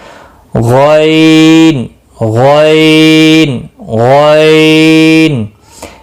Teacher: اس میں خا اور غین میں خرخر کی آواز ہوتی ہے